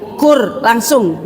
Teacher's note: Lam ketemu ro gitu Ibu ya. Jadi langsung Ibu jangan pakai kul.